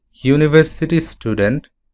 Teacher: When we say university student, then we get the sound YU, not only U. So because the sound starts with Y, which is a consonant, that's why we have to use A.